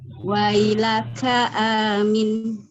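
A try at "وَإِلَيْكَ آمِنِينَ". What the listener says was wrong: Huruf kafnya harus lebih tegas. K, jangan K. Coba lagi. Jadi kaf itu memang ada hamznya tapi jangan berlebihan. Jadi biasa aja kakiku, kayak kita bilang kaki, kakiku, kaki kakekku, kaku. Jadi wailaka amin.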